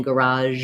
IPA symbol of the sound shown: ʒ